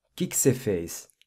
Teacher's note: In fast spoken Portuguese though, the ''o'' in the ''o que'' gets dropped